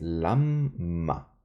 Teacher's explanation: Así que es Lama pero el acento está al inicio · esta mem se la tiene que dividir, se la tiene que sentir en la pronunciación, así que es lamma, pero el acento está al inicio